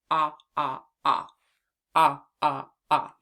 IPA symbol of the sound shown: ŏ